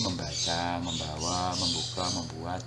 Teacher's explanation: nasal yang sedaerah artikulasi dengan fonem awal kata dasar. Misalnya men ya atau meng digabungkan dengan kata dasar berawalan fonem B ya.